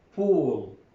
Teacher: The mouth takes up the position necessary for the vowel oo. So the lips are rounded, or will be rounded to produce oo, which is after p